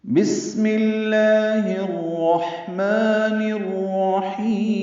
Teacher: بسم اللہ میں با کو سین سے ملانا ہے، با کی نیچے زیر ہے، سین ساکن ہے اور اس میں ہمس ہوتا ہے، یعنی اس میں سانس کی آواز جاری رہتی ہے۔ صفیر کی آواز سے اس کو پڑھنا ہے، یعنی سیٹی کی آواز سے، پتلی باریک آواز ہوگی بس۔